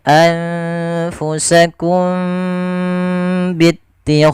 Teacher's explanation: Ini kita namakan dengan ikhfa syafawi. Cara membacanya suara mimnya harus ditahan. Tidak sebagaimana izhar yang tidak boleh ditahan suara mimnya.